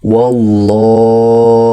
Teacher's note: Adapun tafkhim cenderung kepada vokal o.